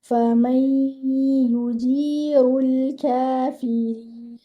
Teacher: You will have to merge the noon sakina into the ya. · You will merge the noon into the ya. You will read it with akmal gunna. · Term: idgham